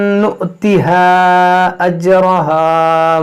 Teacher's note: وَرَسُولِهِ، مِنكُنَّ لِلَّهِ وَرَسُولِهِ وَتَعْمَلْ صَالِحًا نُؤْتِهَا أَجْرَهَا مَرَّتَيْن، یہاں دیکھیں حمزہ ساکنہ ہے، اس میں جھٹکا ہوگا